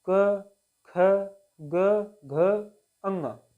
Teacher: हमारे कंठ से आवाज निकलता है तो इसे कंठ व्यंजन के रूप में जानते हैं